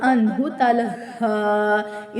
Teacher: اس نون کے اوپر اخفا نہیں ہوگا کیونکہ حروف حلقی میں سے ہا نون ساکن کے آگے ہے ، نون ساکن کے آگے حروف حلقی میں سے ہا ہے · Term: اظہار